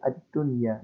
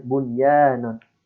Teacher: untuk nun dan ya ini tidak usah didengungkan sehingga dibacanya itu dengan ad-dunya langsung tuh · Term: izhar mutlak